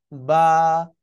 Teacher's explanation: ঠোঁটের ভিজা অংশ থেকে, দুই ঠোঁটের ভিজা অংশ থেকে উচ্চারণ হচ্ছিল